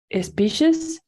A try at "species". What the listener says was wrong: Good. Very good. This is like sh, right? At the beginning, you said it without the sh, but it's better like that.